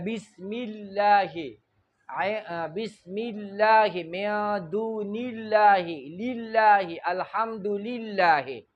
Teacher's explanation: دغه د الله لام که په قرآن مجید کې راشي او د دنه ما قبل کسره وي، زیر وي مخکې طرف ته، نو دغه د الله لام کې به بل چل کوو، ترقیق باریک به وایو. د ژبې ویښ په ښکته پاتې کېږي، د ژبې منځ به ښکته پاتې کېږي